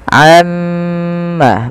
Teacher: Di sini kita harus menahan bunyi suara mim yang berharakat tasydid karena dia termasuk daripada bacaan gunnah. Nah, ini jangan kita langsung baca amma yatasaalun, tapi tahan dahulu gunnahnya atau bunyi suara mimnya sepanjang 2 harakat.